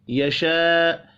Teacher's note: الف کے اوپر بڑی مد ہے، 5 الف کے برابر کھینچ کر پڑھیں گے